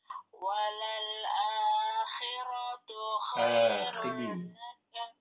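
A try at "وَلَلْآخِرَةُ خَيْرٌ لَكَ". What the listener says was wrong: Akhi, bukan akhe. Akhi.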